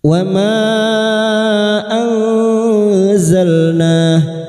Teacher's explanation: Mad jaiz munfasil kita panjangkan 4 atau 5 harokat.